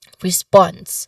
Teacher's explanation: The primary stress falls on the second syllable of response, which is sponse. Now, many learners might incorrectly stress the first syllable.